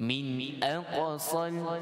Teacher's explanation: Qaf dengan qalqalah sughra